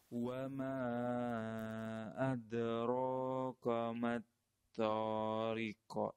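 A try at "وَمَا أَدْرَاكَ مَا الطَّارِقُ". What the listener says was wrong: Kok itu ada fathah, kemudian ada hamzah sukun juga, double salahnya. Kemudian adraka, jangan ko, kemudian to, jangan terlalu banyak angin. Riqu. Jangan ko. Kayak kita nyebut apa ya? Om mungkin, o.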